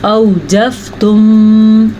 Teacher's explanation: اوجفتم اس کو لمبا نہیں کیا جا سکتا کیونکہ یہ لین ہے. واو مدہ کو لمبا کر سکتے ہیں کسی حد تک، کلیف اور یا مدہ کو بھی، لیکن یا لین یا واو لین کو نرمی سے پڑھتے ہیں.